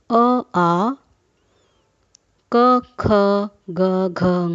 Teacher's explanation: यह सभी वर्ण हमारे कंठ से बोले जा रहे हैं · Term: कंठव्य, कंठ्य